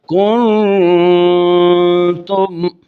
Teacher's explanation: مثال کے طور پر کنتم، یہ جو ہم ناک میں ایک الف آواز نکالتے ہیں، اس آواز ایک الف کے نکالنے کو غنہ کہتے ہیں، اور چونکہ ہم چھپا کر نکال رہے ہیں اس غنہ کو، نون کو ظاہر نہیں ہونے دیا، اس لیے اس کا نام ہے اخفا مع الغنہ۔